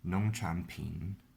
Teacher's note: Well, you pronounce it well, but when you say the tone, you say it wrong. Okay, it's second tone, third tone, third tone.